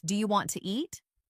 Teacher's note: Sometimes letters are dropped, like the T in want to, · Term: connected speech